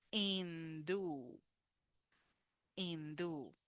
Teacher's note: Remember the H in Spanish does not sound, is silent.